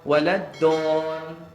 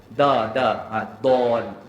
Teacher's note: Kalau sebut waladdon, maksudnya hujung lidah kita tu menyentuh kuat di bahagian depan. Hujung lidah tu jadi kuat, tahan depan. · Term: huruf dal